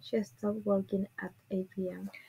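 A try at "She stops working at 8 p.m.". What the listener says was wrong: Remember to pronounce the S. She stops. She stops working.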